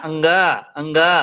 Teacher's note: अंगा अंगा उच्चारण देखो मुह और नाक दोनों से हो रहा है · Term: अनुनासिक